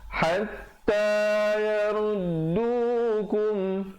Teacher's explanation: Sekali lagi izhar syafawi, bunyikan mim matinya dengan jelas, jangan dipanjangkan.